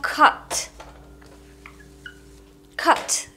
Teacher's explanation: между а и о Но ближе к о